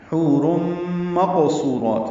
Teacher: قاف حروف مستعلیہ میں سے موٹا پڑھیں گے، پر کریں گے، اور اس پہ قلقلہ بھی ہوگا، صفت قلقلہ بھی ہے اس کی.